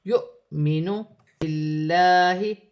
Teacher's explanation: نہیں ہوگا، واو خالی ہے، حمزہ پر جزم کی حرکت ہے، حمزہ پر جزم کی حرکت ہوگی تو جھٹکے کے ساتھ پڑھا جائے گا